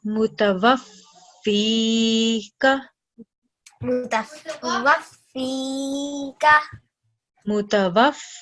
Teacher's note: That means that there are 2 letter fas present over here. So, we're going to produce 2 sounds for letter fa. And then next is letter ya that has a sukoon on top of it, and letter ya, as we know, is a huruf madda. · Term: shadda